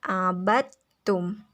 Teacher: Kan di situ ditulisnya abadtum, tetapi cara bacanya yaitu dimasukkan dalnya ke ta, jadi abadtum. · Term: Idgham mutajanisain